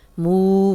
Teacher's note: कलकला वाला हर्फ है मू, वाव मद्दा है, जज़म वाली वाव पीछे मीम पे पेश, 2 हरकत लंबा करेंगे।